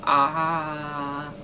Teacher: your vocal cords are vibrating the whole time